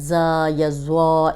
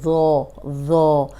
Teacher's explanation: اوپر سامنے کے جو 2 دانت ہیں ان کے اندرونی کنارے پہ زبان رکھ کے ادا کریں گے تو یہ ذو نکلے گا، زا نہیں پڑھنا، زا یا زوا اس طرح کر کے اس کو نہیں پڑھیں گے، ذو سیدھا پڑھیں گے، ذو ذو موٹا بھی ہے اور نرم بھی ہے۔